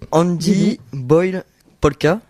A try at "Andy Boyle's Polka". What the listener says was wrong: Voilà, il y a le is qui avait été un peu zappé, mais